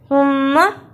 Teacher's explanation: زبان کی نوک کو سامنے اوپر کے دو دانتوں کے کناروں سے ملائیں اور بولیں